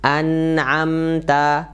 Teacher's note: Nun sukun dan mim sukun ini ada mengalir sedikit walaupun dia dalam keadaan izhar ya, jelas ya. Jadi ada mengalir sedikit.